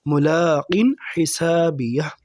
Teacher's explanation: حلق سے ادا ہونے والے حروف میں سے ہے ہا، تو یہاں پر ہم غنہ نہیں کریں گے۔ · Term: حروف حلقی